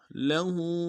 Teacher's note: लहू में हा के ऊपर खड़ा उल्टा पेश एक दाम में खींचेंगे